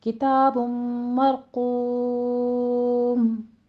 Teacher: بم میں تنوین کا قاعدہ ہے، ادغام الغنہ 2 کاؤنٹ کرنا ہے. مرقوم میں را بھی مفخم ہے اور قاف بھی پر پڑھا جائے گا. · کتاب میں فتح قائمہ ہے، 2 کاؤنٹ کیجیے